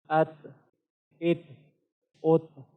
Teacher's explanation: تا کے اندر صفت حمز ہے، اور اسی وجہ سے اس کو ادا کرتے وقت ہماری جو سانس ہے یہ جاری رہتی ہے۔ ات ات ات۔